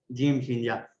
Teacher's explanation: یہ تینوں حروف جو ہیں زبان کے درمیان کو درمیانے تالو سے لگا کر ادا ہوتے ہیں